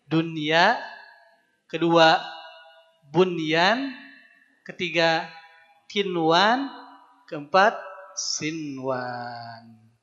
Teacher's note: ini empat kata yang disebutnya izhar mutlak dalam al-qur'an ketika ketemu empat kata ini ya tidak boleh diidghamkan